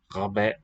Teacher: It's going to have long alpha, final hamza, and initial ghain.